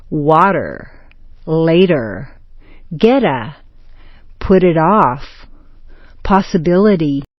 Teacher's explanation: T equals D. Make the middle T sound like a D.